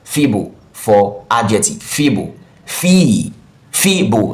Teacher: Fee and bo are the two syllables. The first syllable is stress.